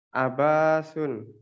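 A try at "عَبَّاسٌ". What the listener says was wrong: Nah, baknya itu ditasdid. Abbasun.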